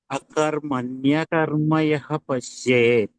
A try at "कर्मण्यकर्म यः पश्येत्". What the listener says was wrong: First అక్షరం ముందు ఆలేదు కదా.